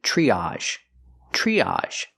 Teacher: Tr makes the ch sound like chicken plus the r tree. Use the long e like green beans.